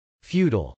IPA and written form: fjˈutəl (futile)